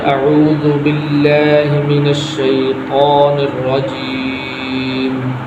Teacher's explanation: باللہ اس کے اوپر کھڑی زبر ہے تو کھڑی زبر کو تھوڑا سا لمبا کرنا، جہاں پر بھی کھڑی زبر ہوگی تو اس کو لمبا کیا جائے گا۔